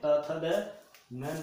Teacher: यह त वर्ग जो है दंत से प्रयोग किया जाता है